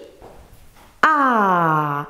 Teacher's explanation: L'air ne passe pas par le nez. La bouche est grande, ouverte, et les lèvres arrondies.